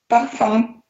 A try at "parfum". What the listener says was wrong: Все равно зло слышу. Слышите, да, что получается он немножко тяжелее, чем у меня? Он должен быть чуть легче.